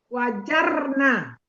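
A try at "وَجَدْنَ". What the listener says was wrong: Ini tadi ro atau dal? Ini kan wajada. Kalau untuk hunna kan danya disukunkan tambah na. Nah, jadi sukunkan aja huruf ketiga.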